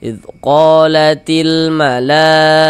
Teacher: Nah, maka dia berubah menjadi mad wajib muttasil. Panjangnya mad wajib muttasil itu wajib dibaca minimal dibaca dengan empat harakat. Jadi, 4 sampai dengan 5 harakat.